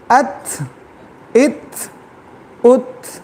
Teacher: تا میں شدہ اور ہمس کی صفت ہے، اس کے اندر سختی بھی ہے، اس کے اندر نرمی بھی ہے